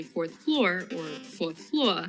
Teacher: since both fourth and floor are words with an r after a vowel he could listen closely to hear whether they said the r or not